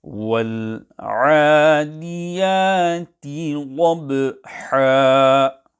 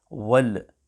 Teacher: Qalqalah must not be carried out on the lam sakinah. Hence to recite wal, this will be incorrect.